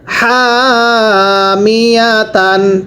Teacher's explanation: এই হায়ের মধ্যে এক আলিফ টানতে হবে। মিম জের মি, হা মি, ইয়া জবর ইয়া, তা দুই জবর তান, হা মিয়া তান।